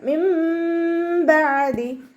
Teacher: അപ്പോൾ നൂൻ സാക്കിനയെ നമ്മൾ മീമാക്കി മാറ്റിമറിച്ച് ഉണ്ണയോടുകൂടി ഓതി കൊടുക്കുക. നൂനിൻ്റെ സൗണ്ടിനെ അവിടെ കേൾക്കുകയില്ല. മീമിൻ്റെ സൗണ്ട് കൊടുക്കുക, ഉണ്ണ കൊടുക്കുകയും ചെയ്യുക.